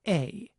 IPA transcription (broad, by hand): eɪ